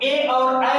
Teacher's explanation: ए और ऐ है, यह कंठ और तालु से निकलता है, दोनों के संयोग से